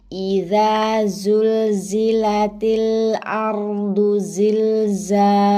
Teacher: Hamzah dan ha tempatnya di satu makhraj pita suara, tenggorokan bagian bawah.